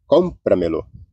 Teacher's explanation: o com, que é a sílaba tônica aí, cómpramelo.